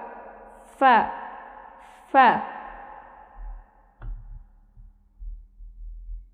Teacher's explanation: ঠোটের পেট তা উপরের দুই দাঁতের আগা